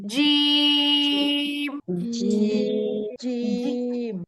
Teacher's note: জিহবার মাঝখানটাই উপরের তালুতে লাগবে জিবার আগা ব্যবহার হবে না জিবার আগা ব্যবহার করলে এটা বাংলা বর্গীয় জয়ের মত জিম হবে